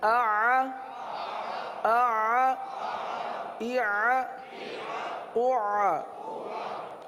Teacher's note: یہ جاری رہے گا، عین کی آواز ختم نہیں ہوگی۔ اگر آپ نے پڑھا آ تو عین نہیں رہا، آواز جاری رکھنی ہے، آ آ اع اع۔